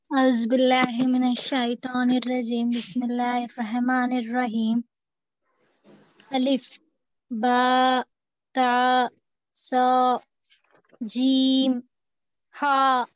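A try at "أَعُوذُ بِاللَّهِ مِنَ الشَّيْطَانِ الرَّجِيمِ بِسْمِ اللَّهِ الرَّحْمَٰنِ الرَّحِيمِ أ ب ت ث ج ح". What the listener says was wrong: माशाल्लाह बहुत अच्छा पढ़े आप, लेकिन इतना जल्दी जल्दी भी नहीं पढ़ना है, थोड़ा सा आराम से खींचते हुए हुरूफ को पढ़िए।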